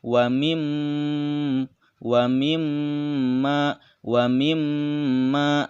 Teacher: ingat ditahan karena disitu ada Meme yang bertasydid namanya adalah ghunnah cara bacanya mendengung dan dengungan nya ditahan 2/3 harokat